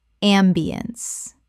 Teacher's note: Three syllables with the stress on the first. The ence collapses to unts.